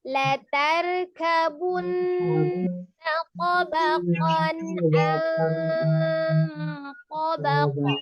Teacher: Ain kan salah satu huruf al-halqi dari tenggorokan bagian tengah. Maka izhar dibacanya jelas, tidak ditahan, tapi dia jelas, tidak lompat. · Jadi kedengaran kayak huruf nunnya itu bukan makhraj nun yang dibentuk, tapi mengarah kepada makhraj huruf to. Karena ujung lidahnya menyentuh ke pangkal gigi seri. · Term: ikhfa